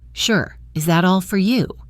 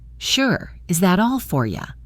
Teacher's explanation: Unimportant words or function words like for, to, at, are often unstressed, and their vowel sounds become weak. The O in for and the ow in you both become a soft sound, almost like for ya. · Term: reduction